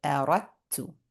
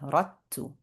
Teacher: So then we have ra going straight to the ta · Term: idgham